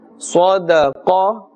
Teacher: qaf is part of the huruf musta'aliyah, so we should say qa and not ka. Ka will be referring to the kaf, and therefore will be confusing these letters.